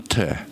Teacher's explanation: похоже на английский, наверное, да. Аспирация такая с придыханием.